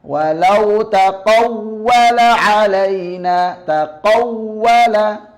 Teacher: kondisi naber, artinya suara sedikit diangkat, yaitu ketika kondisi wawu yang bertasdid